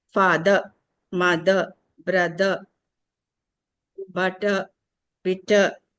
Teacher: The ra sound should not be articulated at the end of the word. Father, mother, brother, butter, bitter, like that.